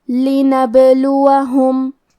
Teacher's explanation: ہمیں با کو قلقلہ سے پڑھنا ہے اور قلقلہ کا معنی ہے حرف ساکن کو ہلانا، تو ہم با کو ہلاتے ہوئے یہ کلمہ کو پڑھیں گے